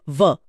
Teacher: व के उच्चारण में निचले होठ और ऊपरी दांत का इस्तेमाल होता है। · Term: दंतोष्ठ